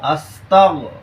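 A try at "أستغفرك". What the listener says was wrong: তাগো না, আস্তাউ। তাও তাও। তুমি তাটাকে পাতলা করতেছো না, তা পাতলা হরফ। আস্তাউ।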